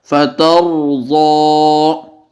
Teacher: زبر یا پیش ہو تو تب بھی را کو موٹا کر کے پڑھا جاتا ہے